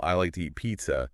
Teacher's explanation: The stress is on like eat and pizza. Yeah. And the two is unstressed and spoken really quickly. It's that contrast that gives it that rhythmic feel.